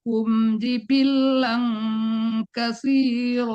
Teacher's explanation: ditahan dulu tasdidnya sebentar